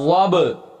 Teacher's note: یہ با حروف قلقلہ میں سے ہے، پیچھے ہم پڑھ چکے ہیں، لہذا اس کی آواز کو مخرج میں ہلا کر پڑھیں گے